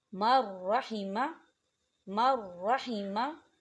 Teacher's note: نون ساکن کے بعد را آ رہا ہے، را کے اوپر تشدید ہے، اور را جو ہے حروف ادغام میں سے ہے، تو یہاں بھی غنہ نہیں ہوگا۔